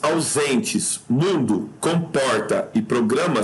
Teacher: em todas elas a sílaba tônica é a penúltima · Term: paroxítonos